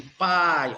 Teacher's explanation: Olha aqui, pai, olha o A do pá, i, tá? Olha o i como sai fraquinho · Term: semivogal